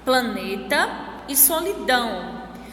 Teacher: As sílabas mais fortes são ne em planeta e dão em solidão.